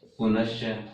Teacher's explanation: विसर्ग के बाद में च है तो दंते सकार और दंते सकार च के कारण तालव्य स में बदल जाएगा, तो हमारे सामने रूप बनेगा पुनश्च।